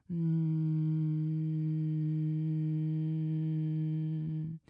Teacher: The sound and breath is coming out through your nose while your mouth is closed, and you can feel the vibration in your head center. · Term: bumblebee breath